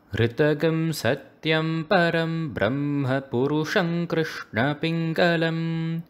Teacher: when you say ritagam satyam, you actually bring the ta and gum in a low pitch, when they're actually at a middle pitch.